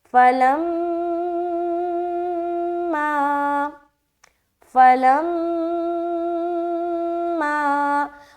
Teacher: تو میم کے اوپر شد ہے تو میم کو ایک بار پڑھا شد کے ساتھ غنہ کر کے، اور پھر میم کو ایک بار الف کے ساتھ بھی پڑھیں گے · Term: میم مشدد کا غنہ